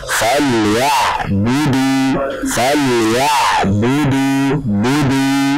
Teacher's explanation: Jadi harakat-harakatnya keluarkan dari al-jawf, dan juga bacaan mat pada falyabudu keluarkan dari al-jawf.